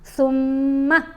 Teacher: یہاں میم کے اوپر ہم نے غنہ کرنا ہے لیکن میم کو لمبا نہیں کرنا، ٹھیک ہے. جب غنہ کریں گے تو آواز ناک میں جائے گی، ایک حرکت کے برابر ٹھہر کر اس کو ادا کیا جائے گا.